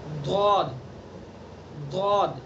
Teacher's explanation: زبان کی کروٹ اور اوپر کی ڈاڑوں کی جڑ، ابھی میں نے بتایا یہ کروٹ ہے، سائڈ ہے، یہ کروٹ ہے، ادھر کروٹ ادھر کروٹ، تو ان کروٹ کو اوپر کی ڈاڑوں پر لگانا ہے.